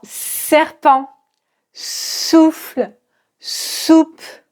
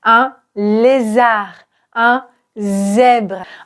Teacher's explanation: S, comme dans serpent, souffle, soupe. Le Z qui est très proche du SE, mais là également il y a une vibration. Donc z, un lézard, un zèbre.